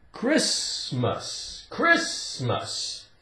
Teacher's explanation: Christmas the T is silent